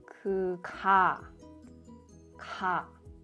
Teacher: The back part of my tongue rises